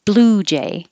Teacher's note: the first one is almost always stressed